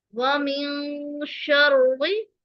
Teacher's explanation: नून की आवाज को हम छुपाएंगे, यानी नून की आवाज सुनाई ना दे। व मिन शर्रि, रॉ मुशद्दद है, एक जज़म वाली रॉ है और दूसरी मुतहर्रिक रा है जिसके नीचे जेर है।